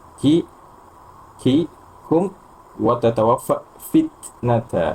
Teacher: ketika mengucapkan huruf kaf dan huruf ta itu, maka sifat syiddahnya didahulukan, kemudian sifat hamasnya menyusul